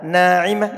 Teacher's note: k ditebalkan tadi tebalkan Seperti contohnya adalah Naimah ini ada Alif sebelum Alif adalah huruf yang dibaca tipis sehingga ndak ditebalkan